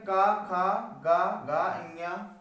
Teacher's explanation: इनका उच्चारण हमारे कंठ से निकलते हैं, इसलिए इनको कंठ व्यंजन कहते हैं